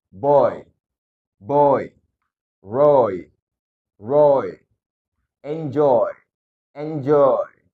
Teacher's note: o dan I digabung menjadi o